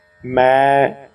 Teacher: ਮੈ ਦੁਲਾਵਾਂ ਦਾ ਉਚਾਰਨ ਮੂੰਹ ਪੂਰਾ ਖੋਲ ਕੇ